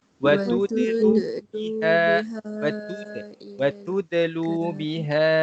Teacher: Yang pertama tuan-tuan dan puan, pada huruf dal di sini, huruf dal adalah huruf qalqalah. Jadi kalau dal mati kita kena baca dengan lantun sedikit.